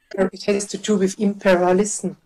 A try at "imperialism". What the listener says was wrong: Not impair, imperial. Imperialism. Imperialism, yeah.